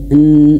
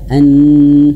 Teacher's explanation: huruf nun di sini harus dialirkan sedikit karena huruf nun ini dia memiliki sifat ee tawassud ya. Dia mengalir sedikit. Fasmaun. Nah, un ya n ada nnya seperti itu.